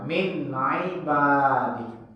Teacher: Ain itu di wastul halqi, di tengah-tengah tenggorokan. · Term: huruf ain